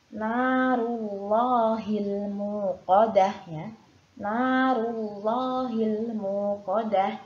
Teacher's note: Di sini ada lafadz Allah yang sebelumnya ada huruf ro yang berharokat dhammah, maka wajib dibaca tebal